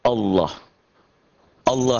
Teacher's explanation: Mengucapkan huruf lam dengan tebal sampai memenuhi mulut ketika mengucapkannya. Sementara suara A-nya lebih mendekati O.